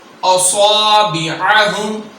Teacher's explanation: صاد کو پر پڑھیں گے، سیٹی کے ساتھ پڑھیں گے، عین کی ادائیگی کریں گے۔